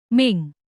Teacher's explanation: cara membacanya samar dengan dengung dan ditahan selama 3 harakat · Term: ikhfa